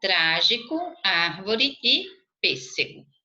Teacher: Proparoxítonas, a antepenúltima sílaba é tônica